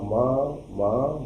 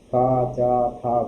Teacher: खा चा था में तो वाइब्रेशन नहीं है, लेकिन जब आप बोलेंगे माँ माँ यहाँ पर वाइब्रेशन गले में कंटिन्यू ज़्यादा होता है, तो ऐसे को बोलते हैं हम घोष वर्ण, जिसका उत्तर होगा माँ, ये एक घोष वर्ण है।